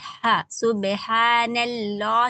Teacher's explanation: लाम जलाला मोटा पढ़ेंगे